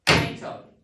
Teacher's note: The stress is in the middle.